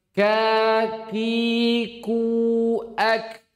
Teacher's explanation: kaf dia memiliki hamas karena bertemunya pangkal lidah dengan langit-langit bagian lunak dan keras. Makanya dia keluar hamas.